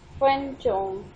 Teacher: Fen, flat tone, then chong, flat tone